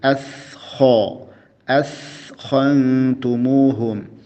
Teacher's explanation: Askho, jangan auskho, jangan pengaruh tebal ke huruf kha ya, tapi askho, askhantumuhum. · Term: huruf sa